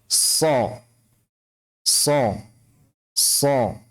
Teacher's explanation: ujung lidah berada di gigi seri bawah. Kemudian suara itu keluar dengan desisan melalui celah di antara gigi seri atas dan bawah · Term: 'Shad' makhraj